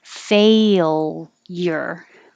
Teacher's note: it does have kind of an invisible y in there